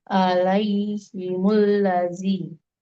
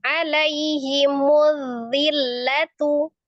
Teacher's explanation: Alif lam syamsiyah. Alif lamnya dilewatin tasdidnya ke dal.